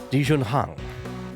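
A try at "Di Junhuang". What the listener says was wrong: It's not. Yeah, it's Huang. Well, no, Huang. You gotta have the W.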